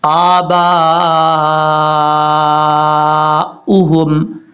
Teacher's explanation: با کے آگے الف ہے، الف کے اوپر مد ہے، اس مد کو لمبا کرنا ہے اپنے اڑھائی الف کے برابر کیونکہ یہ مد متصل ہے